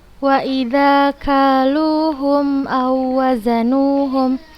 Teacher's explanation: Nah, maka kita bacanya langsung, kita masukkan ke huruf yang kedua dan dibaca tanpa gunnah dan tidak membacanya dengan gunnah, tidak ditekan, tidak ditahan, langsung kita baca ke huruf yang berharokatnya. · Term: Idgham mutamatsilain